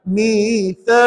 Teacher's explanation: jangan alang-alang bunyi Q tadi tu sebab hukumnya qalqala kubra